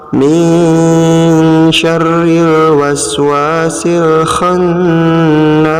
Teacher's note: Pada ayat keempat ini kita menemukan 2 hukum bacaan, yaitu ikhfa yang diberi tanda warna merah, sedangkan gunnah yang diberi tanda warna kuning. Cara membaca ikhfa yaitu dibacanya samar ya, disertai dengan dengung dan ditekan.